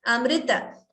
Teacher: It is not Amruta. It is not Mru. It is Mr.